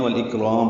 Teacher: والاکرام وقفاً مد عارض للسکون ہے. اور میم کی زیر ساکن ہو جائے گی